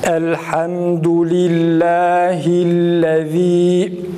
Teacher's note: Mesela ellezi'deki zalı fazla uzatmayalım. Meddi tabi ne fazla uzatılması gerektiği gibi fazla uzatılsa dahi hata olur.